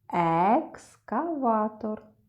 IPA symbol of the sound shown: е